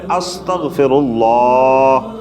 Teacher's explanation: اس کو صحیح لفظ اللہ کو پر کر کے اور لمبا کر کے پڑھنا لازم ہے